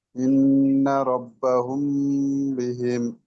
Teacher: ইজরাটা মিম সাকিনের পরে বা, মিম সাকিনের পরে বা এসেছে, তাই মিম সাকিনকে এক আলিফ গুণনা পরিমাণ গুণনা করে পড়তে হবে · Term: ইকফায়ে সাফাবি